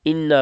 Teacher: انا پہ نون پہ غنہ کریں گے، تھوڑا سا اس کو لمبا کریں گے